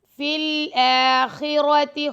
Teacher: خا اور را کو موٹا پڑھیں گے، تا کو لمبا بالکل نہیں کرنا آپ نے · حمزہ پر کھڑا زبر ہے تو اس کو 2 سیکنڈ تک لمبا کریں گے